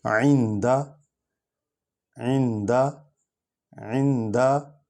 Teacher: عین جو ہے حرف ہلکی ہے، اقصی حلق سے نکلتا ہے، نون پر جزم ہے، یہ عین کے ساتھ مل کر پڑھا جائے گا جزم والا حرف۔